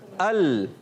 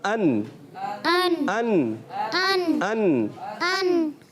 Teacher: लाम में ज्यादा जबान लगती है और नून में थोड़ा उससे कम और रा में उससे भी कम कम होती चली जाती है